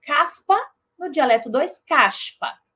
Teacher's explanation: mas percebam que eu nunca vou ter um som z por quê Porque p é desvozeada